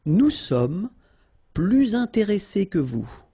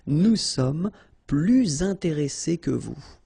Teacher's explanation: you make this little link, little liaison between the two, so you hear a little bit this S